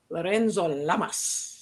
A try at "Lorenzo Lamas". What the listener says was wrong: No accent. He's Lorenzo Lamas.